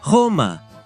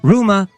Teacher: In Italian, the initial R is soft, while in Spanish it's strong.